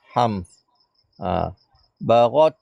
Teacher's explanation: Ta tu bila dimatikan kena ada bunyi hamas sikit.